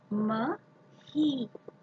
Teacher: म, close your lips, म. He, blow air from your windpipe, aspiration.